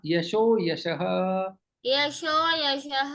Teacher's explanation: विसर्ग ओ में परिवर्तन और अवग्रह आएगा